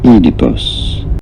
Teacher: You do want to stress on the first syllable.